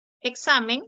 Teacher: Examen se acentúa en la penúltima sílaba.